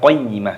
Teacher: Ini ketika berhenti maka diganti dengan huruf ha, maka dibaca qayyimah